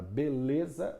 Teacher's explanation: Na palavra beleza, o lê é a tônica. O b e os a são, respectivamente pré-tônica e póstônica.